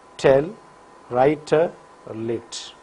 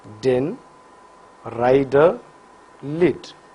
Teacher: Vocal cords vibrate for d. So, t is voiceless alveolar plosive while d is voiced alveolar plosive.